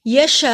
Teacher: शीन पे बड़ी मद है, बड़ी मद को 3 अलिफ के बराबर